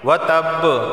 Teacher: وتب با حرف قلقلہ میں سے ہے، وقف کی صورت میں یہاں قلقلہ ہوگا، یعنی آواز مخرج سے ٹکرائے گی